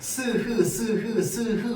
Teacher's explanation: 혀만 움직이지 공기가 나오는 통로가 좁혀졌다 열렸다 좁혀졌다 열렸다만 하지 막히지 않습니다. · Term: 마찰음